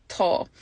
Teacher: the A fada makes the A long, so it gets an O sound